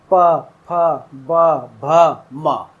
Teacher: तो प वर्ण में आप देखिए आपके होंठ चिपकते हैं, प फ ब भ म, चिपके एक दूसरे से टकराते हैं, जीभ कहीं नहीं टकराती किसी से, जीभ ऐसी पड़ी हुई है, प फ ब भ म य, या तो सॉरी अलग चला गया, प फ ब भ म, किसी में जीभ हिली नहीं हिली, सिर्फ होंठ हिल रहे हैं।